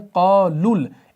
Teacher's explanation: जब आप इसको मिलाकर पढ़ते हैं तो आप पढ़ते हैं क़ालुल, इस लाम को इस लाम से मिलाते हैं। ये वाव भी नहीं पढ़ा जाता, ये अलिफ भी नहीं, और ये वाला शुरू वाला हमज़तुल वसल भी नहीं पढ़ा जाता जब हम वसल करते हैं।